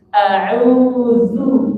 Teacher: Makanya kalau zal dhammah dibaca tipis.